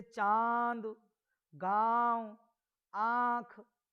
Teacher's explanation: इन व्यंजनों का उच्चारण नाक और मुंह दोनों की सहायता से किया जाता है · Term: अनुनासिक